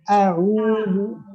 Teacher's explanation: Jangan sampai ada gunnah dalam hidungnya karena ain beda sama gunnahnya.